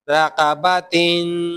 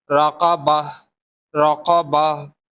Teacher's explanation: the last ta with double kasra will be converted to ha